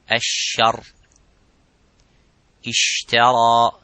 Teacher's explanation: the Sheen has a gap and that let the air slightly go